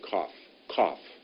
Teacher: there's quite a hard forcing out of air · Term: guttural sound